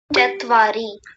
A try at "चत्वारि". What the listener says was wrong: हाँ, ठीक है।